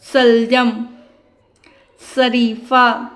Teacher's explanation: जो शलजम वाला सा होता है वो तालव्य से इसका ध्वनि निकलता है। · सीटी के फॉर्म में, जैसे कि हमारी जो जीभ है वो थोड़ी सी ट्विस्ट होती है दोनों साइड से, और जैसे सीटी के फॉर्म हवा बाहर की ओर आती है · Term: तालव्य श